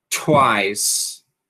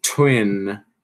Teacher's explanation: Lembrando que o T é aspirado